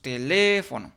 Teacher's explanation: nos damos cuenta que la sílaba tónica es la sílaba le, por lo tanto cumple, tanto por la ubicación, cumple con la regla del acento ortográfico y de las palabras esdújulas.